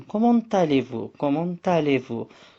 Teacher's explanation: bir bağlantı yani ulama sessiz harften sonra sesli harf başladığında birleşik oluyor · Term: liyezon